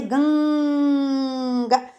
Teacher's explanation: अनुस्वार की आवाज़ जो है, हवा जो है, नाक से आनी चाहिए